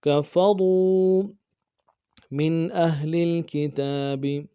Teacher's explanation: میم کو نون ساکن کے ساتھ ملانا ہے، نون ساکن میں یہاں پہ اظہار ہوگا